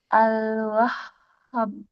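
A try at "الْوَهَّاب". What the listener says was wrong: Hanya 2 harokat. Al-Wahhab. Wahhab.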